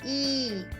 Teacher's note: the tongue moves to the front of your mouth in a vertical position it's close to the roof of the mouth